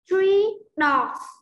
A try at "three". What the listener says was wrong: Chữ R mô nhận ra. Your lips forward.